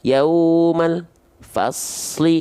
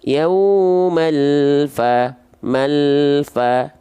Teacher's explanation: Jadi antara al dengan fa itu nggak ada dia, nggak ada jeda hening. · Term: tawassut